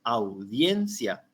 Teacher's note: dijimos que la a es una vocal abierta y la i es una vocal cerrada entonces esa Unión es la que forma el diptongo